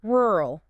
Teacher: To say rural, your tongue has to retroflex. Yeah, it has to curl backward in the mouth in a way that simply doesn't exist in many Romance or Indo-Aryan languages.